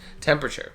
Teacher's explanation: So that E after P and before R, you can just get rid of it and treat it as if it was never there.